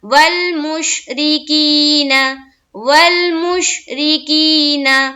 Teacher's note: جب را کے نیچے کسرہ ہو تو را کو کس طرح پڑھتے ہیں؟ باریک پڑھتے ہیں